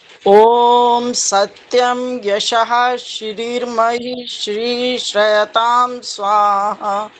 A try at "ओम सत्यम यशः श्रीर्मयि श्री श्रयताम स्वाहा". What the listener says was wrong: उच्चारण ठीक है, लेकिन इतना लटका लटका के भी नहीं बोलना चाहिए, ये ज्यादा लटका के बोला गया है।